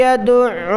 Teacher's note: عین پر تشدید ہے اس لیے میں سختی کے ساتھ ادا کر رہا ہوں، اور عین کو گلے سے نکالا جاتا ہے۔